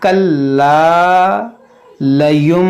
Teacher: लाम मुशद्दद है, इसको दो बार पढ़ेंगे, और ये अलिफ से पहले ज़बर है, ये अलिफ मद्दा है, इसको खींचेंगे